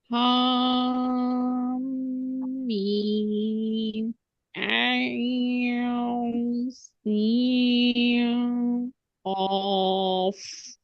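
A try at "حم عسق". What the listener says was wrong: अच्छा, ये हा मीम में हा को मीम से नहीं मिलाना है। मीम जो है, हा मीम, ये अलग पढ़ा जाएगा ना। 2 काउंट्स।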